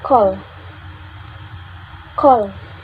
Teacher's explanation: released a little puff of air from our mouth we can check by our hand if we feel there is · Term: aspiration